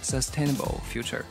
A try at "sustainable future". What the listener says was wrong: 他是跟王源一样的，有一点说 dark L. Sustainable. 还有一点点听起来是 o， 不是100%准确的，但是差不多吧。Alright, so his pronunciation definitely better.